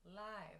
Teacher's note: that v sound i talked about where you use your vocal chords plus that open i sound